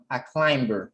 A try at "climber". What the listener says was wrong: climber. You don't pronounce the B.